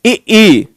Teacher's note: अग्रस्वर जो है जो जीभ के आगे के हिस्से से बोले जाए,